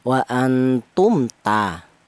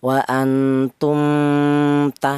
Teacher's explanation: huruf memnya dibaca jelas, mem matinya dibaca jelas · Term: idhar syafawi